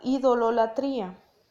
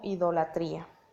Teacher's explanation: esta palabra pasó por un proceso de contracción o de eliminación de una sílaba que hacía que se escuchara como repetida